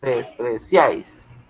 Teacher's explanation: acá tenemos el triptongo, una sola sílaba y tenemos vocal cerrada ahí, vocal abierta A, vocal cerrada ahí.